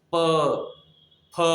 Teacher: प वर्ग में प फ ब भ म, ये क्यों बोला जाता है इसे ओष्ठ, ओष्ठ मतलब दोनों ओठ, पप्पी जानते हैं ना, पप्पी क्या होता है पप्पी, तो उसी से पवर दोनों ओठों का स्पर्श, देखिए ऊपर और नीचे दोनों ओठों का स्पर्श होता है